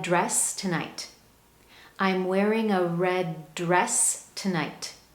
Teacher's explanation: It almost sounds like one word, red dress. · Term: linking